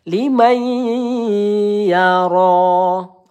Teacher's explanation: Ro panjang satu ayunan atau dua harakat. · nun sukun bertemu ya. Idgham bighunah. Kita panjangkan dua atau tiga harakat.